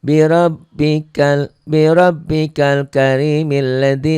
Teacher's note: Tuh alif lamnya nggak dibaca, itu namanya hamzah wasal. Apabila diwasal, apabila disambung bunyi alifnya nggak ada. Tapi karena kita berhenti bi rabbikal karim, ini bunyi jadi a.